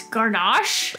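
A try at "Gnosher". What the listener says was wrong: Nosher Layer. Nosher? The G is silent. Because it's like the word gnaw.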